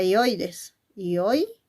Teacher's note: dos sílabas no es mono como las anteriores pero vemos Que en la primera sílaba que es yoy ahí está la vocal cerrada la vocal abierta y la vocal cerrada